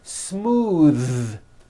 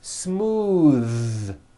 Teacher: Believe it or not, the TH sound in smooth is voiced.